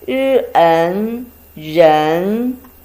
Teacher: a combination of r and n, second tone. R, n, 人, it means people, person, human.